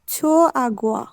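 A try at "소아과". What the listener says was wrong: ছোনা, সোয়া।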